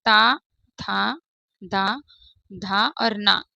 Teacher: जीभ का जो हमारा अगला हिस्सा ऊपर के दांतों के पिछले हिस्से को छूता है। जब हमारी जो जीभ है ना, आप बोलकर देखिए ता, ता, तो ये जीभ हमारी दांत से टकरा रही है और दांतों से टकराने की वजह से इन्हें दंत व्यंजन हम कहते हैं।